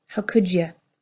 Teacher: This D and Y pulling together to make the sound of J.